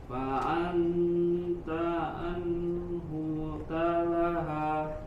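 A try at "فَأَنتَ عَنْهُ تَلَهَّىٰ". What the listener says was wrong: Ya, masih jelas lagi annya. Tadi samarkan lagi. Kayak kalau kita mudahnya mungkin kayak eng gitu, tapi tidak 100% menjadi eng. Kalau eng kan fa'ang ta'ang, tapi fa'anta fa'alta.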